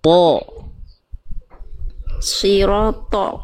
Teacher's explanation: Ya, tapi tolnya jangan jadi tipis, jadi to. Tolnya tetap pangkal lidahnya naik.